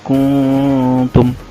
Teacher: Caranya dengungkan dari hidung tapi lidah sudah berada di gusi-gusi gigi seri atas. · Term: ifa aqrab